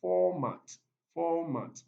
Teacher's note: this is a noun and it's stressed on the first syllable